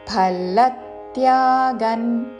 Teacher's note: మహాప్రాణాక్షము ఫ, ఫా కాదు, ఫలత్యాగన్